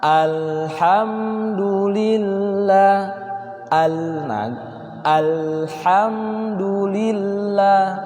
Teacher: karena lam ini tidak terlalu mengalir, tidak juga terlalu tertahan, sehingga cara bacanya pertengahan.